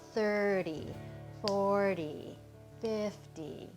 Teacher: when I say 30 or 40 or 50 it's always the first syllable that gets the the full accent